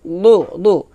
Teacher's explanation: এটা জিহ্বার গোড়ার কিনারা উপরে দাঁতের মাড়ির সঙ্গে লাগিয়ে মোটা করে উচ্চারণ করতে হবে, দদ পেশ দু এভাবে।